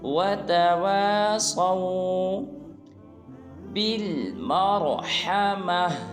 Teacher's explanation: اس حرف میں بھی صاد کو پر ادا کریں گے